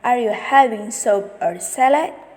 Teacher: rise-fall intonation, which is the intonation that rises and then falls.